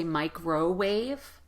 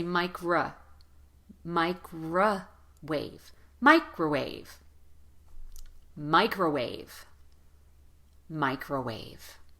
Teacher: for the unstressed vowel in microwave as well even though the the O that's right in the middle is the letter O again it's going to be replaced with the unstressed vowel so don't say microwave say Micra micro wave microwave microwave microwave